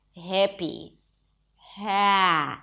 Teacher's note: You can start with an 'e' and then gradually open it to an 'a'